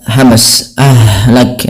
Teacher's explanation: ha yang dia sukun ini sifatnya ada sifat hamsnya